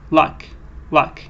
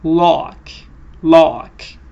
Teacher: so this one is shorter luck luck but the previous one was lock lock